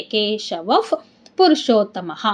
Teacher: ವ ಮುಂದೆ ವಿಸರ್ಗ ಇದೆ ವಿಸರ್ಗದ ಮುಂದೆ ಪು ಇದೆ ಅದರಿಂದ ಅಲ್ಲಿ ಆಟೋಮೆಟಿಕ್ ಆಗಿ ಅರ್ಧಫ ಆಗುತ್ತೆ